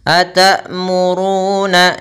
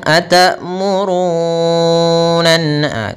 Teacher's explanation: Atamuruna. Kemudian ru di sini kita panjangkan 2 harakat, ada waw mati setelah huruf dhammah maka dinamakan mad tabi'i